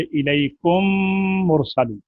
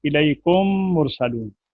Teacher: پہلی میم کو دوسری میم میں ملا کر مثل ایک میم مشدد کے غنہ کے ساتھ ادا کی جائے گی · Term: ادغام